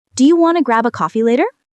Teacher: Notice Do you want to becomes do you wanna. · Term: Connected speech